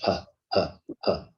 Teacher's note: Ha is produced from the glottis. Okay, from the glottis, from the vocal cords. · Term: ha sound